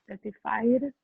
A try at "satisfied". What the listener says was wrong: The stress should be on the first syllable. Satisfied. Satisfied. If you say the word, it will be satisfied, and you make a past tense. The stress do not change, and it's satisfied.